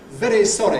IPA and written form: ˈveɾi ˈsɒɾi (very sorry)